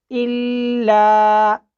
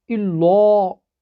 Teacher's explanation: میں لام کو باریک پڑھ رہا ہوں